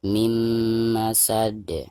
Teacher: Nah, ini juga sama, ada nun sukun lalu berhadapan dengan salah satu daripada huruf idgham mim ya. Jadi suara nun sukunnya itu harus langsung dimasukkan ke huruf mim yang ada di depannya.